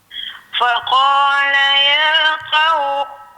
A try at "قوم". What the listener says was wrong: Tebal sikit lagi. Tebalkan sikit lagi. Qaumi.